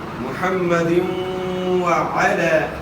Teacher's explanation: دال کے نیچے دو زیر کی تنوین ہے، دو زیر کی تنوین کے بعد حروف یرملون میں سے واو ہے، تو یہاں ادغام مع الغنہ ہوگا